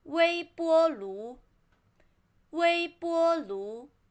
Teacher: 微波 both flat tone and 炉 second tone